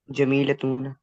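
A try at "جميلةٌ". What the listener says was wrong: ये तूना साउंड होती नहीं है, ठीक है। इसको जहन से निकालें, तूना कोई साउंड नहीं होती।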